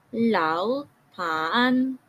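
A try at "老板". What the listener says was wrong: Meron ka na namang first intonation. Don't do that one. Just pronounce it using the third intonation. Lao pan.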